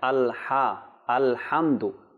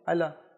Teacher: আল হ্যাঁ জি এখানে জবর উচ্চারণ করা যাবে না লামের উপর লামের উপরে জবর উচ্চারণ করা যাবে না যেহেতু সাকিন রয়েছে